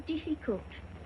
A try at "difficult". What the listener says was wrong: Diff. Not deaf. The word is difficult.